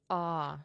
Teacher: the RP accent features a split between the word trap and the word bath, where bath shifts toward a broad ah sound. There's a list of words that are affected by the trap bath split, and unfortunately, you do just kind of have to memorize them if you want to do an accurate RP accent.